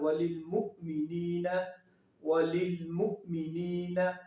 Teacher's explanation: یہاں پہ حمزہ جھٹکا دے کے پڑھیں گے